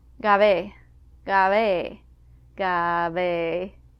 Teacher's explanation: you may mistake the soft B sound for a V sound, or you may not even hear it at all.